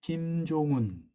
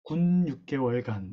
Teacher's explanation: 북한어에서 후설의 고모음과 중모음이 사실상 두 개의 모음이 아닌 하나의 모음으로 합류가 된 것을 보여주고 있다